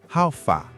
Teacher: The pitch go up small on fa.